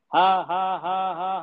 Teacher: महसूस करें कि हल्की सी हवा मुंह से निकलती है, बिना गला कसे, बिना गले को जोड़ दिए। ओके। हा कहकर हल्का सांस छोड़ें, छोड़ने का एहसास करें, ये बिल्कुल नेचुरल होता है।